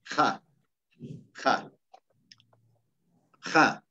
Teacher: la H quechua no es muda como en el Castellano